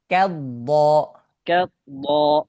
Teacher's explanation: কাফ মোটা হওয়া যাবে না